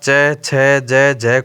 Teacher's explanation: च वर्ग के प्रथम चार व्यंजन अर्थात च छ ज ज को स्पर्श संघर्षी व्यंजन कहा जाता है